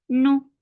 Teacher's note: Nu for dhamma circular lips, the sound is short.